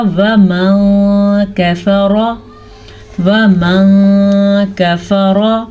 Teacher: ہم نون ساکن کو چھپے ہوئے غنے کے ساتھ پڑھیں گے